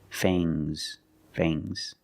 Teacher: the nasal sound M and a soft G fangs fangs and the S is making a zebra sound Z but it's soft